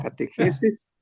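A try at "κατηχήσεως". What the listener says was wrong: catejeces, no, lo lees bien y luego le cambias el acento. Catejeces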